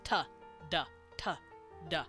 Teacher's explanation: it's you putting your tongue on The alvea Ridge in your mouth behind your teeth